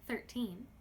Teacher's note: If I put less emphasis on the N sound, thirteen, it sounds much more natural. Thirteen. Unfortunately, now it is a little bit harder to understand what I am saying.